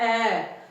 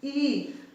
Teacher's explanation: ਜਦੋਂ ਅਸੀਂ ਬੋਲਦੇ ਐ ਤਾਂ ਪੂਰਾ ਮੂੰਹ ਆ ਜਿਹੜਾ ਖੁੱਲ ਜਾਂਦਾ, ਜਦੋਂ ਅਸੀਂ ਬੋਲਦੇ ਈ ਤਾਂ ਮੂੰਹ ਆ ਜਿਹੜਾ ਉਹ ਬੰਦ ਹੋ ਅੱਧਾ ਥੋੜਾ ਜਿਹਾ ਖੁੱਲਦਾ ਤੇ ਐ ਫੈਲ ਜਾਂਦਾ।